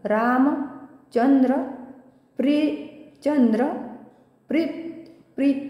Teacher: प्री वर पुन्हा आघात येईल, कारण की पुढे जोडाक्षर आहे